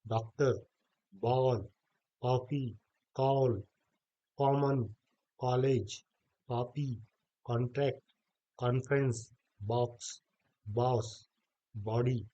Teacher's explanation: यह आ और ओ के बीच की ध्वनि